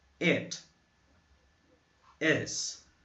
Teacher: É um som de I, mas que você faz uma boca como se fosse falar um E.